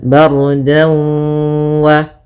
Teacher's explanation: Kemudian dau ada fathatain bertemu dengan waw, maka apabila ada fathatain bertemu dengan waw hukumnya idgham bi gunnah atau ma'al gunnah, yaitu kita masukkan dannya ke waw, kemudian kita tahan dulu gunnahnya 2 harakat, bardan wa.